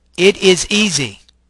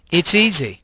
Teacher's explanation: the first one doesn't use blending whereas the second one does use blending